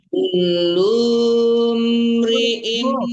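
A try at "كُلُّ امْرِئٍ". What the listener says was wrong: Jangan kulum, nggak panjang lunya. Kulum, kan mim yang mati. Langsung disamar mim matinya, jangan dipanjangkan lunya.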